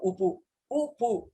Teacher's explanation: पवर्गोच्चारणकाले वायुः ओष्ठम् अथवा ओष्ठौ वा ताडयति। एवं ताडनेन क्षणकालं तावत् कश्चन ध्वनिः उत्पद्यते, सः ध्वनिः उकारः एवं पवर्गीयवर्णाः इति। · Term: ओष्ठजौ